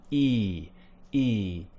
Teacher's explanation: my tongue is a little bit higher and i'm actually relying a little bit more on those sides of my teeth to push the sides of my tongue against them and push my tongue up